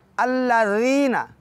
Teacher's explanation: ज़ाल है, नरमी से पढ़ेंगे, ज़बान को ऊपर वाले दांतों के किनारे पे लगा के मुख्तसर